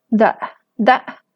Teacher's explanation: el tono alto, la tensión en las cuerdas vocales y la laringización, el cierre de las cuerdas vocales. Están las dos cosas simultáneamente en esta vocal.